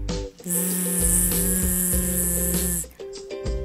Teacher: Il se prononce Z comme le son de l'abeille. La pointe de la langue touche les dents du bas. L'air passe. Il y a une vibration dans les cordes vocales. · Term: le son Z